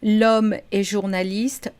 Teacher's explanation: the H in French is not pronounced, it's not aspirated or anything. It doesn't exist by itself, so we do have a vowel sound here.